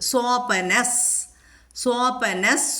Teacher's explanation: വിസർഗം കഴിഞ്ഞിട്ട് സ വന്നതുകൊണ്ട് അവിടെ സ വരുന്നു വിസർഗസ്ഥാനത്ത്